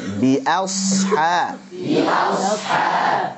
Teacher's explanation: Jadi a tipis, shadnya tebal dan alirkan.